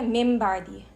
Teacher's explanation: Because ये मीम और बा का मखरज सेम ही है, दोनों लिप से आ रहे हैं. तो अब ये ज़्यादा आसान है कि हम नून को मीम जैसा बनवा दें. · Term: इक़लाब